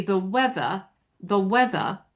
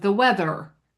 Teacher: That r is nonrotic, meaning that it's implied but not sounded.